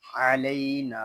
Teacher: یہاں نون کو ہم ایک الف تک کھینچ کر پڑھیں گے کیونکہ یہاں پہ الف مدہ ہو رہا ہے